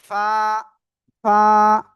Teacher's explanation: নিচে ঠোঁটের পেট উপরে দুই দাঁতের আগার সাথে লাগে হালকা বাতাস বের করবেন